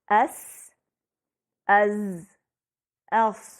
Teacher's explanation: ان حروف کی ادائیگی میں سیٹی جیسی آواز بھی ہے۔